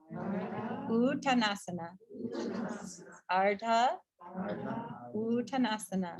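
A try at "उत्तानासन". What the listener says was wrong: You're saying uttanasana, but it's a little U. Because you were saying like the long vowels that are capitalized here, it's like an extra B. Uttanasana.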